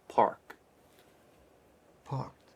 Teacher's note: Park is a very distinct kind of American vowel because we're not opening up the mouth so much and it's not coming from the back of the throat but rather from the center you see there's a subtle difference if You observe the shape